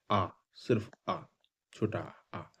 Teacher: तो मध्य स्वर ऐसे स्वर जिनका उच्चारण जीभ के मध्य भाग से होता है